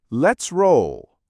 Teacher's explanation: Quick T sound blends into R.